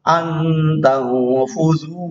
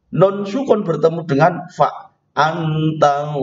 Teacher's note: langsung saja bacaannya menuju pada huruf yang akan tampak itu, tetapi tersengau, tidak jelas, samar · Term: ikhfa